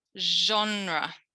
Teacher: now i'm going to type the sh like in genre it's a voiced sound to do the sound it's like doing a z and then